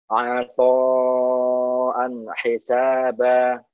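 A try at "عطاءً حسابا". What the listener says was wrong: Tapi hati-hati ketika menipiskan ain, jangan sampai kelamaan sehingga menimbulkan mat ya. Apo, itu jadi kayak ada mat. Apo langsung. Apo an hisaba.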